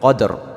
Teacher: Jadi karena ada huruf dal mati atau sukun di tengah kata titik, cara membacanya harus bergerak dan berbunyi seperti membalik huruf dal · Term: qalqalah sugra